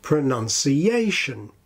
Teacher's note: we need to hear a distinction between the syllable 'ci' and the main syllable of the word, which is pronounced like 'yay'